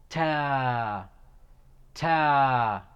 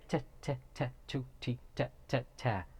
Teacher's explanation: Now be careful, no whistle sound like in the English T. · It is pronounced from top part of tip of the tongue, top part of the tip of the tongue, when it hits the roots of upper front incisors.